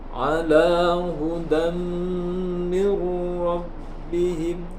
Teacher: Ala hudam mir rabbihim, di situ disebut dengan hukum bacaan idgham bi gunnah karena terdapat tanwin fathah yaitu pada dal bertemu dengan huruf mim. Idgham itu dileburkan hurufnya dan digunnah disertai dengan dengung. Dengungnya 1 alif lebih sedikit.